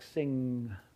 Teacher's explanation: the nasal sound at the end of a word like sing, so if you think about where your tongue is, it's up in the back there